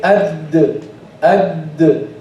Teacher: At the gum, by using the front part of the tongue. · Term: makhraj of the dal